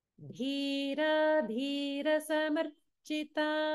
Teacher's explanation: first is dhira, where the ra is a dirgha vowel, and then next we have dhira, ra is hrasva